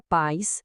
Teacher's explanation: A palavra pais sem acento é um ditongo, uma sílaba só.